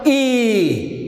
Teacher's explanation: the front of your tongue raised towards hard palate, and these vowels are known as front vowels.